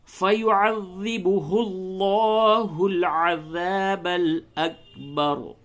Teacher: تو یہاں پہ چونکہ پیش ہے اس لیے لفظ اللہ کی لام کو پڑ کر کے یعنی موٹا کر کے پڑھیں گے